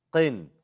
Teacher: three of those letters, qaf, ghain, and kha, when they have a kasra, it's not fully mufakham.